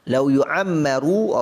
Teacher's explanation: ra ini baris depan, maka bacalah ra ini dengan tebal